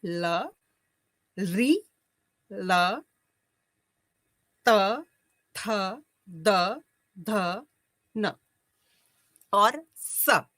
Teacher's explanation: है इसी क्रम में कहते हैं ऋतु लसा नाम दंता अर्थात ऋ त वर्ग त थ द ध न ल और स इनका उच्चारण स्थान दंत माना जाता है